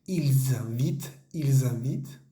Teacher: tenemos que hacer esa esa conexión entre entre la s y la vocal que que sigue